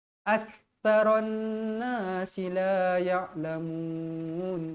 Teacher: Ak, tekankan huruf kaf tu, fokus tuan-tuan perempuan. Huruf kaf adalah huruf hamas, berangin.